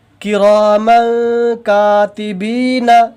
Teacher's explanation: یہاں پہ بھی تنوین کے بعد حروف اخفا کے 15 حروف میں سے کاف ہے، کاف ہے، تو یہاں پہ بھی تنوین کی آواز کو ناک میں چھپا کر کے پڑھیں گے۔ تنوین اور نون ساکن کی آواز جو ہے وہ ایک جیسی ہوتی ہے، تو یہاں پہ تنوین ہے تو نون جیسی جو تنوین اور نون ساکن کے پڑھنے میں جو نون کا آواز آتا ہے اس کو ناک میں ایک الف کے برابر چھپا کر کے پڑھیں گے، اسی کو اخفا کہتے ہیں۔ · اور نون ساکن یا تنوین کے بعد حروف اخفاء کے 15 حروف میں سے کوئی بھی حروف آ جائے تو اسی طرح سے نون کو ناک میں چھپا کر کے، نون کی آواز کو ناک میں چھپا کر کے 1 الف کے برابر پڑھیں گے